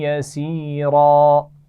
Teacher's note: आखिरी हर्फ रा पर दो ज़बर तनवीन है तो हमने इसको वक्फ़ करते हुए अलिफ मद्दा से बदल कर पढ़ा यसीरा, और रा को मोटा भी पढ़ा जाएगा, इसका ख्याल रखना है।